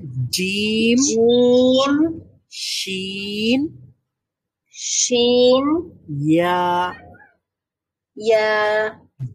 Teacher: জিম বলার সময় জিহ্বাটা এবং প্যালাটের মধ্যে যতটুকু ফাঁকা রয়েছে, শিন বলার সময় আরেকটু বেশি ফাঁকা রয়েছে, এবং ইয়া বলার সময় আরেকটু বেশি ফাঁকা রয়েছে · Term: জিহ্বার মধ্যভাগ